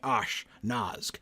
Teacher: In order to shift your mouth over from doing the sh sound to the n sound, you kind of have to pause, right? So there really has to be a break.